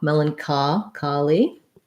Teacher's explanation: the ch in melancholy says the k sound rather than the ch sound the o says ah melancho kali and the y says e